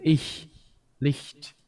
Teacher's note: The palatal unvoiced fricative